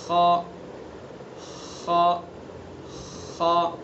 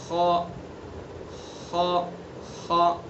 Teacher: خا کو بھی حلق سے ادا کریں گے، لیکن منہ کی طرف سے، آگے والے حصے سے، ادنی حلق یعنی حلق کا منہ کی طرف والا حصہ۔